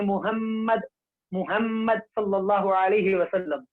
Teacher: मीम का मखरज दोनों होठों की खुशकी का हिस्सा